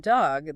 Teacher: for the short O in dog, the sound is coming more from the back of your mouth. Your mouth is more open and your lips aren't rounded as much.